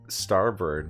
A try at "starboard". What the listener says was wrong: Board? Starbird. You said bird. Board. Starboard. That is spelled board.